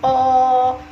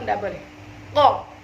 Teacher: Tapi harus ko, seperti itu, karena dia tertahan nafasnya. Yang kedua adalah syiddah, yaitu tertahannya suara. Tidak boleh ada suara yang mengalir ketika mengucapkan huruf qaf ya.